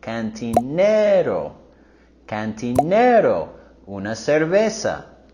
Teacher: With our pronunciation here, we want to go higher with the intonation on cantinero